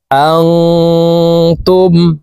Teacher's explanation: নুন সাকিনের পর ইকফার হরফ তা আসছে, এই কারণে এই নুন সাকিনকে নাকের ভিতরে লুকাইয়া গুন্নার সহিত পড়ব। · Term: ইকফা গুন্না